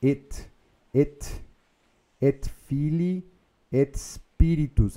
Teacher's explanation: Veja que aqui a gente pode emendar o T e o S, né? Ao invés de fazer et Spiritus.